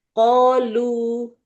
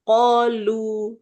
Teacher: Kolu kan berhenti 1 ayunan. Aslinya kan kalau nggak berhenti, kita nggak 1 ayunan ya, harus 2 ayunan.